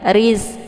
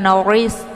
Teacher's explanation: ra-nya berharakat kisrah, maka dibaca tipis